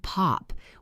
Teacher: Try saying pop with your hand in front of your mouth. You feel a puff of air. That puff hits the microphone and makes a bad noise.